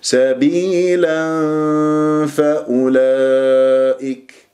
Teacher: إخفاء بغنة الثنايا العليا باطن الشفة السفلى ، سبيلا فأولئك، عرفتم؟ سبيلا، لا تطبق الشفاه بل تكون هنالك